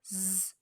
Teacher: If you add your vocal cords to this, it becomes Z, and he's voicing his sibilant sounds.